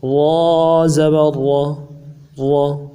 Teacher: را زبر را، موٹا پڑھ رہے ہیں بغیر کھینچ کے، بغیر جھٹکا دیے۔